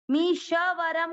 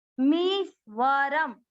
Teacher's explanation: म पे बड़ी ई की मात्रा दीर्घ करेंगे, मी आधा श उसके साथ, मीश्वरम, मीशवरम कोई नहीं बोले, श आधा है, मीश्वरम। व में अमिक्स किया और र को आधे म के साथ पढ़ा है।